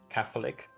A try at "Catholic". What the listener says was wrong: Alright, because it sounds like you say an F instead of a th, you know?